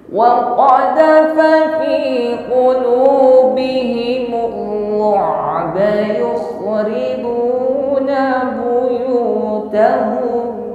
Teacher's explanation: fa ini memiliki sifat huruf hamas juga. Ya, sifatnya hamas, ada nafas yang mengalir ketika mengucapkannya.